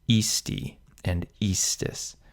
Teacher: Ii, isti, it, iimus, iistis, and ierunt, although you'll very often find the second person forms contracted, where both short I's combine to form a long I before an S